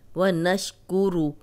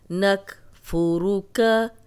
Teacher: व नशकुरुका, व नशकुरु, रा पे पेश है तो रा मोटी पड़ी जाएगी